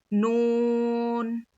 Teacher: लाम मीम दोनों होठों के सूखे हिस्से से मीम अदा होता है। नून जुबान के किनारे को सामने के चार दांतों के मसूड़ों में लगाने से नून अदा होता है